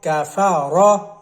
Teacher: را کو زبر کے ساتھ موٹا پڑھنا ہے